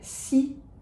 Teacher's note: That X is a K-S sound, and we do not pronounce that final S of Cixous.